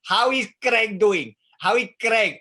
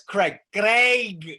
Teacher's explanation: Craig is a diphthong in English that is almost impossible for native Spanish speakers to pronounce.